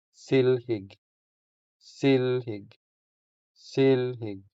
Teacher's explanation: The stress is on the first syllable, making the first E longer than the second E.